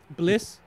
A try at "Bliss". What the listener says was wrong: You put a little extra syllable in there.